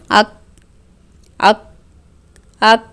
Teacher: دیکھیں ہوا باہر نہیں آ رہی یعنی کہ صفت شدت ہے